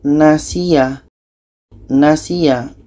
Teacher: si ini dibaca panjang Karena ada tanda mad dan ya mati kita baca jadi si ini kita panjangkan sebab tanda mata seterusnya